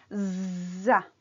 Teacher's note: Както при затворените срички, съгласната з ще я изговориме удължено и веднага след това ще прибавиме гласният звук.